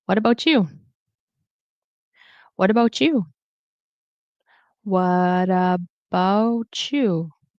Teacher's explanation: I can either make it a CH, or I might have the tendency to make it into a glottal stop. I'm not sure why, but I generally don't pronounce it as a true T.